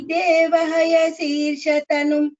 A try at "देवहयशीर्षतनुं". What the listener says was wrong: This Shakara here, Shirsha, the first Sha, Shankara Sha, is heard as C, little. You know how to pronounce it, just correct it.